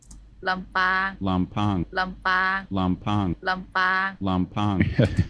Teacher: you can really hear that aspiration you can hear the pop over the Pea